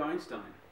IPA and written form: ˈaɪnstaɪn (Einstein)